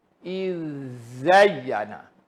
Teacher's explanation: Kena ditebalkanlah sebab zai tebal daripada zal. Sebab jumpa zal dulu baru zai.